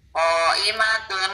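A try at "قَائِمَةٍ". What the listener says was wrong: Oh, panjang.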